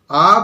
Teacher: আ বললাম কেন্দ্রে অর্থাৎ মাঝখানে কিন্তু নিচের দিকে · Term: নিম্ন স্বরধ্বনি